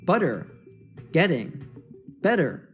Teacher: Here we have what we call an American T, which makes the T morph into a soft D. This happens when you have a T sound between two vowel sounds.